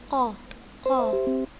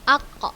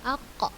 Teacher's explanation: Qa. Kita akan terasa lidah kita yang paling belakang ini menempel pada langit-langit yang paling atas di belakang yang lunak itu. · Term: huruf qa